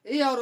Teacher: इसका जो उच्चारण स्थान होता है ए और ऐ का कंठ प्लस तालु होता है। ए और ऐ का जो उच्चारण स्थान होता है कंठ प्लस तालु से होता है।